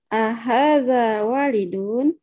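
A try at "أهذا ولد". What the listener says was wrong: Waladun. Walid. Ada juga kata walid. Tapi ada alif. di setelah huruf waw ada alif. Artinya orang tua.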